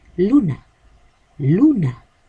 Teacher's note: La sílaba átona sería na.